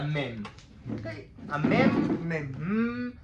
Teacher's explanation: חתומות ברור שאוויר לא יוצא מהפה אף מולקולה לא חומקת מהפה וסך הכל האוויר מהדהד ויוצא מהאף